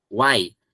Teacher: Eu tenho o U, que é uma semivogal, e o I, que é uma semivogal. E eu tenho o A no meio. Aí todas elas se grudam.